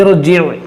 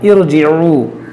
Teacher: را ساکن سے پہلے اگر عارضی زیر ہو تو اس را کو بھی موٹا پڑھا جاتا ہے